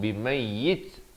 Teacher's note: ada bunyi angin di hujung, itu bunyi hamas. Itu kalau kita waqaf.